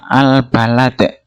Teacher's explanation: idhar qamariyah. Lam sukun dibaca terang.